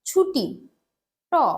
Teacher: ট হচ্ছে অঘোষ অল্পপ্রাণ ধ্বনি